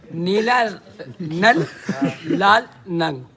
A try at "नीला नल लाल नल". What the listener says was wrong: नंग नहीं है, नल।